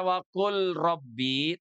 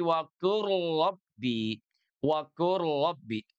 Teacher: huruf lamnya masuk sepenuhnya kepada huruf ro